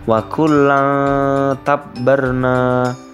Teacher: Artinya, jika terdapat nun mati atau tanwin yang bertemu dengan salah satu huruf ikhfa, maka dibaca dengan cara samar. Samarnya itu nanti seakan-akan terdengar huruf eng, gabungan antara N dan G. Untuk contoh yang pertama, yang menggunakan huruf ta, fathah tanwin bertemu dengan huruf ta.